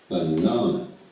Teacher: reduce means the vowel sounds are shorter and weaker for example in the word banana the stress is on the second syllable